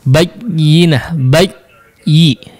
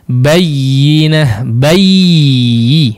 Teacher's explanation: ketika bertasydid memang tidak digunnahkan, tidak terlalu panjang, tapi tidak juga si aliran suaranya mati